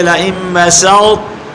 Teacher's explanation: یہاں طا کا تا میں ادغام ہوا ہے مگر سین کے بعد زبان کی جڑ اوپر اٹھائیں گے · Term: ادغام ناقص